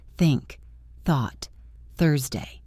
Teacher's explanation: Put your hand in front of your mouth. When you say think, you should feel a strong puff of air.